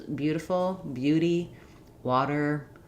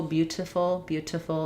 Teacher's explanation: Um, it's followed by unstressed syllables and the t is just flapped in the middle of words in American English